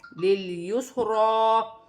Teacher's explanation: ہا پر الٹی پیش ہے، اسے بھی 1 الف کی مقدار کھینچ کر پڑھا جائے گا، اور لام زیر لل، یا سین پیش یس، لیلیس، را کھڑی زبر را، لیلیسرا۔ را کو موٹا بھی پڑھا جائے گا اور 1 الف کی مقدار کھینچ کر بھی پڑھا جائے گا